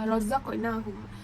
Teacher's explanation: Dekat zaq tu hukum dia qalqalah sughra. Sebab huruf qalqalah zal ni berharakat sukun dan posisinya dekat tengah-tengah. Jadi cara membaca ni dipantulkan secara perlahan sahaja.